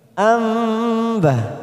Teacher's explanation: nun sukun bertemu ba namanya bacaan iklab, siap masuk kata huruf ba kita tekan 3 ketuk.